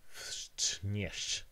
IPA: fʂt͡ʂɲɛʂ